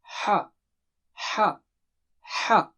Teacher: It comes out from the middle of the throat. Take a deep breath, maybe if you don't have control, and release it from inside the throat like ha, ha, ha.